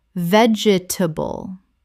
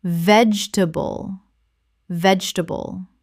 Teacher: 3 syllables in natural speech. The middle syllable almost disappears.